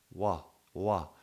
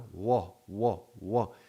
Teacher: the W is a voiced labiovelar approximant. Approximate means it gets close to, but it doesn't close. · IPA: /w/